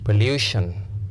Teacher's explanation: you can stress the second syllable because of the long vowel sound oo.